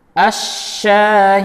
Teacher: lam ta'rif dileburkan ke huruf shin, sehingga hilanglah sifat dan makhraj dari lam ta'rif tersebut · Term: lam ta'rif syamsiyah